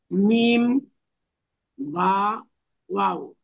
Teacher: ওয়াও উচ্চারণের সময় দুই ঠোঁট গোল হবে